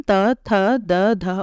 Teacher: इन वर्णों का उच्चारण दंत स्थान से होता है